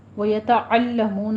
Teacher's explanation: عین وسط حلق سے ادا کریں گے، لام کو باریک رکھنا ہے لیکن تشدید کی آواز نکالنی ہے، تشدید یعنی کہ سختی سے تھوڑا رک کر ادا کریں گے۔